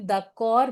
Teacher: d'accord में D ending है and हम उसको सिर्फ द कॉर बोल रहे हैं, we are not pronouncing this D